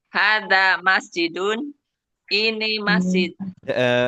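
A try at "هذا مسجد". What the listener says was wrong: Ini intonasinya jangan seperti bertanya, Bu. Hada masjidun. Jangan hada masjidun. Kalau hada masjidun kayak bertanya.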